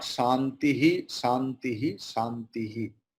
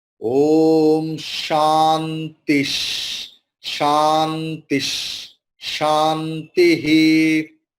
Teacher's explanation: after Visarga there is Shakara. So Visarga is taking Shakara, not Santihi, Santihi, Santihi.